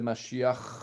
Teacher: on va utiliser toujours Mashiach, avec un guttural à la fin